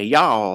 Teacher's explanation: They'll wear cowboy boots, and they'll say y'all all the time. And that's what a Texas accent's all about, is like this, spreading out your mouth, adding extra syllables